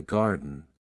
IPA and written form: ˈɡɑːrdən (Garden)